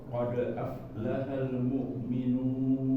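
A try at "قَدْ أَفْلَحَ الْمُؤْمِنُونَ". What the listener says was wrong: Ini masuk rem. Masuk namanya ada hentakan suara di sini ya. Itu namanya yang Anda bilang tadi hamzah. jangan ada hamzah matinya. Qad. Nah, tapi lepas. Qad aflaha. Ya, jadi diusahakan nanti jangan ada remnya, Pak. Jadi qad a.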